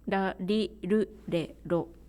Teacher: Japanese R, is different from English, French, or German R, but it is the same as Spanish R without trill. So it's also close to Turkish R or Italian R without trill.